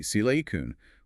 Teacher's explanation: with a stress on the first syllable and of a very short final vowel ensuring the listener understands you mean the fundamental element used in microchips. · with the stress on the first syllable and a very short final vowel